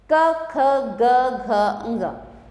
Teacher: क, ख, ग, घ, ङ ये हैं क वर्ग। ठीक है, अब उच्चारण स्थान कंठ, गले से